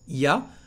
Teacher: the first part il y a becomes ya when he pronounces it